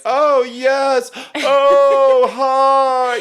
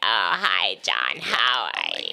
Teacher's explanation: vowel shape is very open, tall in the back of our mouths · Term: natural resonance